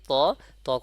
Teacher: জিহ্বার আগা উপরে যে আপনার দুই দাঁত আছে দুই দাঁতে গোড়ার সঙ্গে লাগাইয়া উচ্চারণ হবে এবং এক আলিফ পরিমাণ টান হবে